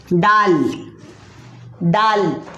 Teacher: जुबान का सिरा ऊपर के सामने वाले दांतों की जड़ से दाल, दाल अदा होता है।